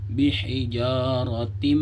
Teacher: Ada tak marbutah yang berbaris kasratain bertemu dengan huruf mim, maka disebut hukumnya idgham bi gunnah. Tanwin bertemu dengan huruf mim, maka bacanya juga didengungkan, dimasukkan. Yang tadinya seharusnya dibaca hijaratin, karena dia bertemu dengan huruf mim, maka dimasukkan ke huruf mim.